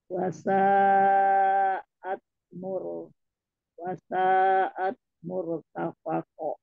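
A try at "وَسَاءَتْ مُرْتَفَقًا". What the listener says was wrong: Nggak mau, wasanya mau 4. Tadi baru sedikit, belum nyampe sampai 4. Murtafaqo, koknya 2 mi. Murtafaqo.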